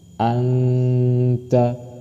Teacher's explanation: Anta disamarkan dan berdengung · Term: samar dan dengung